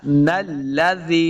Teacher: نون کو لام کے ساتھ ملانا ہے، لام مشدد ہے